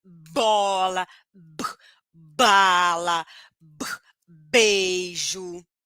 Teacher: Então eu preciso fazer uma pressão aqui no meu pescoço então eu sinto essa vibração do meu pescoço essa força no meu pescoço porque eu tenho vibração de pregas vocais